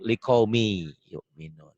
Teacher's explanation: hilang likaumi yu'minun bisa dikatakan idgham itu tulisan dan bacaan beda ditulisnya ada bunyi n-nya dibacanya n hilang melebur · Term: Idgham Bighunnah